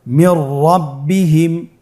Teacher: নুন সাকিনের পরে যদি র হরফ আসে তাহলে নুন সাকিনকে পরবর্তী হরফের সাথে মিলিয়ে গুন্না ছাড়া পড়তে হবে। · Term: ইদগামে বিলা গুন্না